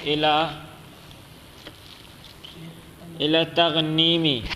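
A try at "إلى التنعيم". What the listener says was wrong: تغنیم نہیں، الی التنعیم،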